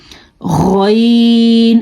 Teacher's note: गैन, खरखरे वाली आवाज़ आती है